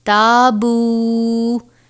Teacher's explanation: الف سے پہلے تا ہے، تا کو باریک پڑھا جاتا ہے اس لیے ہم الف کو بھی باریک ہی پڑھیں گے